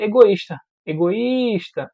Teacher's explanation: a palavra egoísta egoísta a parte mais forte é o is temos aqui um iato porque ele se separou da vogal anterior e o i é a parte tônica